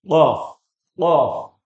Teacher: keluar dari pangkal lidah bertemu dengan langit-langit berdaging